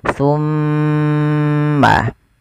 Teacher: Ketika ada mim, mim berharakat tasydid. Cara membacanya ditahan suara mimnya. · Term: gunnah